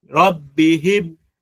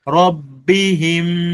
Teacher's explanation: Ghunna inatokea puani. Pumzi inakuja inajaa huko puani, haitoki nje.